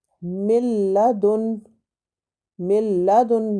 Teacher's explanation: ادغام بلا غنہ، اور یہ ادغام 2 حروف میں ہوتا ہے، لام اور را میں، اور اس میں ہم غنہ نہیں کریں گے، جیسے کہ ملدن، ملدن ناک میں آواز نہیں جائے گی، اور من لدن بھی نہیں پڑھیں گے۔